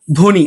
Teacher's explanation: শব্দের শুরুতে ব ফলা যুক্ত থাকলে ব ফলার উচ্চারণ হয় না।